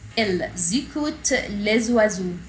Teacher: Les والاس هنا برضو ز لانها between two vowels. S between two vowels pronounced as z. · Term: sound Z